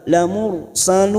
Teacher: Ilaikum lamursalun, lamur ra sukun yang didolai dhamma kita baca tafkim atau tebal